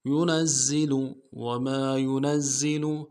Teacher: زا میں سیٹی باریک ہوگی